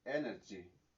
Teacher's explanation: tiene el acento o el stress en la primera sílaba y se pronuncia tal cual, energy.